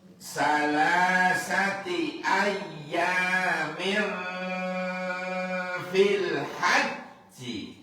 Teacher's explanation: tanwin ketemu fa, fa harus dengung